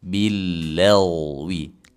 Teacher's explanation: huruf gain sukun sebelumnya fathah dibaca tebal